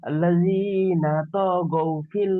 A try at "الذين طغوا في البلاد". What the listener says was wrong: তো টান হবে না,